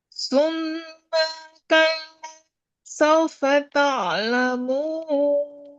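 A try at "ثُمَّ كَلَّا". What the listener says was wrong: Maknya dikurangi. Maknya setengah ketukan. Jangan summa kalla. Summa kalla. Langsung.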